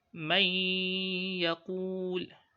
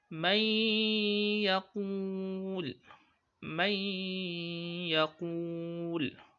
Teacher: I did not pronounce the nun. I have inserted the nun into the ya, to the letter ya. So I just pronounced one letter, which is ya, with shadda. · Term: ghunnah